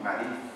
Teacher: no se diferencia la letra S de la C y de la Z. Es lo que nos llaman a nosotros el ceseo.